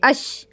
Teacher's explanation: جیسے ہی آپ اش بولیں گی آپ کو خود ہی محسوس ہوگا کہ آپ کی زبان کا بیچ والا حصہ اور تالو کا بیچ والا حصہ آپس میں ٹچ کر رہا ہے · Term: شین